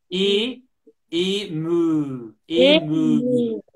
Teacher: E, it's closed because we have a stress.